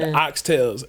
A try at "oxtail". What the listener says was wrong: There's no S. There's no S, by the way. It's oxtail. Oxtails. No. No. It's just always oxtail.